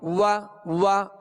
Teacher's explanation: व का जो मखरज है पहले उसको मखरज से अदा करेंगे। व दोनों होठों की गोलाई से अदा होती है।